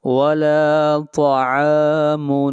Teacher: عین کو کھینچ کر پڑھیں گے ایک الف کے برابر، یہاں پر الف مدہ ہے